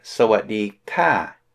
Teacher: Sawatdi ka with a falling tone, short falling tone.